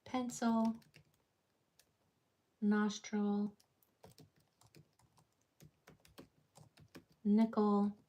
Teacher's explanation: if it's a multi-syllable word with a vowel final l, that vowel is going to change to the schwa sound